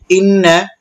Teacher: গুন্না কারণ নুনে তাসদীদ হচ্ছে গুন্না করতে হবে